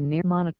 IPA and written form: nəˈmɒnɪk (mnemonic)